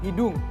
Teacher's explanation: Maka dalam bahasa Dayak Jalai itu sendiri H-nya hilang, maka menjadi hidung saja.